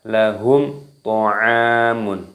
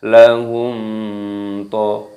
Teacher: Lahum tidak boleh didengungkan, ada mim sukun yang bertemu dengan huruf ta. Ini hukumnya dibaca idhar syafawi. Jadi dibaca lahum ta'amun, tidak boleh dibaca lahum to, tidak boleh.